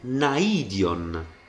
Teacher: l'accento che cade su yota si sente su yota proprio perché non è un dittongo